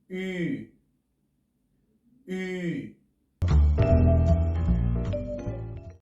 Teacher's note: Para conseguir pronunciar esta letra, deberemos poner la boca en forma de U y pronunciar una I